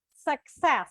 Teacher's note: And for Italians, it's an extra challenge because they have to put success. So they have to say ks just in the middle of the word